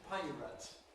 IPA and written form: ˈpaɪrət (pirate)